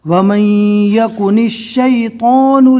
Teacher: نون کی زیر کو شین سے ملانا ہے